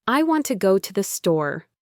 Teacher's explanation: The words want and store are stressed, and to go to the are all squeezed together quickly.